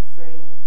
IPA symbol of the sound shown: f